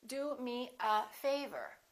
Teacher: Do is important, but favor gets more stress because it comes at the end.